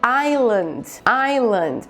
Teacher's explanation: tem um S aqui que desaparece na hora de falar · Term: silent letters